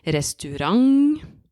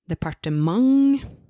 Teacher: emphasis is in the end instead of in the beginning of the word